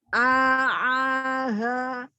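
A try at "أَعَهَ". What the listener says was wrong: Ya, tapi jangan dipanjangkan A-nya. A'aha. A'aha.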